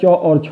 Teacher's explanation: दोस्तों तालु से उच्चारण होता है च और छ का